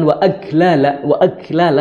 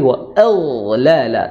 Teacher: ee belakangnya akar dari lidah belakang akar lidah ya dan kemudian dia memiliki sifat ketebalan karena pangkal lidahnya itu naik atau disebut Isti jadi wa bukan Wal walala tapi waala tebal